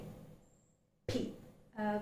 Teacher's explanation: When you articulate that sound, literally it does not affect the vocal cord much. The vocal cord does not vibrate. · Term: plosive